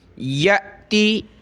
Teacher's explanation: یہ حمزہ ساکنہ ہے، اس کو جھٹکا دیں گے